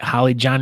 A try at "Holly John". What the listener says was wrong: Holly John. Yeah, no, you said Holly John. it's got to blend together a little faster.